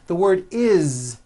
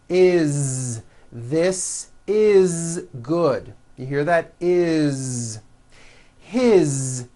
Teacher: all these words that I'm going to show you now are written with an S however they are all pronounced with a voiced Z